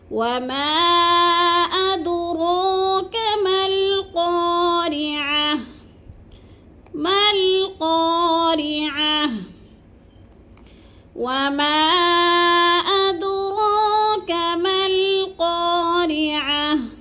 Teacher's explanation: دال کو تھوڑا سا ہلانا ہے کیونکہ ادھر قلقلہ ہے